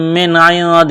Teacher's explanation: اس نون ساکن کے بعد دال ہے حروف اخفا ہے تو غنہ کریں گے، آواز ناک میں چھپائیں گے